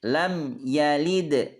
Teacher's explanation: dibaca jelas dan pendek dan tidak dengung